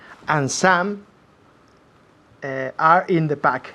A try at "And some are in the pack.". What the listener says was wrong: Y ahora con naturalidad. No como un automóvil. And some are in the pack. No. And some are in the pack. Tal y como habláis en español. Fusionando las palabras.